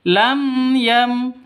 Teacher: Jelas terang. Lam yam seperti itu. Jangan didengungkan, jangan disentak. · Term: izhar syafawi